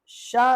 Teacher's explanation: जब आप शा का उच्चारण करेंगे तो आप पाएंगे कि आपकी जीभ आपके तालू से स्पर्श कर रही है, आपकी जीभ का मध्य हिस्सा आपके तालू से स्पर्श कर रहा है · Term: तालव्य